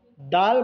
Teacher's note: जुबान की नोक को ऊपर के दांत के जड़ में लगाने से डाल अदा होते हैं